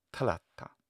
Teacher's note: because the second one is long and I pronounce it long, even though I have the pitch accent on the first, actually there's stress accent there too, they still have trouble hearing it and they'll say talata or something.